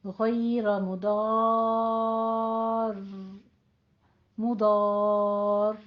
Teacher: بس تھوڑی سی تکرار کے ساتھ وقف کر دینا ہے، اور آپ کا جب را پہ آپ کی تشدید ہے اور اس سے پیچھے الف مدہ آ رہا ہے تو وہ را پھر پور ہو جائے گی